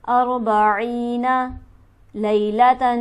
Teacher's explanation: تا پر ہمارے پاس تنوین موجود ہے، اس کے بعد حرف ہلکی بھی نہیں، تو لہٰذا تا پر ہم غنہ کریں گے